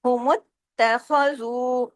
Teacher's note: تا پہ تشدید ہے، سختی سے جوڑنا ہے، تا کو ڈبل پڑھنا ہے